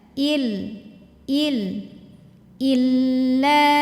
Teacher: dari tenggorokan bawah jadi bawaannya lebih berat ilaha ilaha illa illa masuk ke lam yang ada tasdid jangan ditahan karena lam itu tidak punya dengung jadi ini cukup kita tekan saja